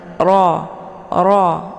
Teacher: ra ini dibaca tebal dengan posisi ujung lidah terangkat ke langit ro ro ya Jangan dibaca ra ya dengan mulut yang terbukaah